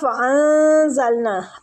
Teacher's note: ان نون ساکنہ کو چھپائیں گے، اخفاء حقیقی ہو رہا ہے